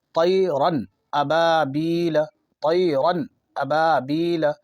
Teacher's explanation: شروع میں ہم پڑھے تھے کہ جو الف خالی نہ ہو وہ حمزہ ہے، تو یہ بظاہر الف ہے لیکن اس پہ زبر ہے، حرکت ہے، تو یہ حمزہ ہو جاتا ہے۔ تو 2 زبر کے بعد یعنی تنوین کے حروف حلقی کا یہاں حمزہ آ رہا ہے، اس لیے یہاں بالکل اظہار کر کے صاف صاف پڑھتے ہوئے آگے بڑھ جائیں گے۔ جیسے طیرن ابابیل، اور ہمیشہ خیال رکھیں کہ 2 زبر کو تنوین کہتے ہیں، اس کے بعد یہاں حمزہ آ رہا ہے تو ہم صاف پڑھتے ہوئے آگے بڑھ جائیں گے۔